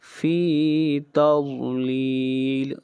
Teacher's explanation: ضاد حروف مستعلیہ میں سے ہے، ضاد کو موٹا پڑھیں گے اور یہاں پر مد عارض وقفی ہو رہی ہے تضلیل پر، اس مد کو 3 الف کے برابر کھینچ کر پڑھیں گے۔